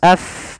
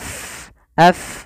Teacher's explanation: Fa Dia memiliki sifat namanya hams yaitu mengalirnya nafas AF bukan ap jangan ditutup tapi AF AF mengalir afwaja afwaja